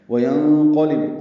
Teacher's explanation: قاف کو پر پڑھنا ہے، لام با باریک پڑھیں گے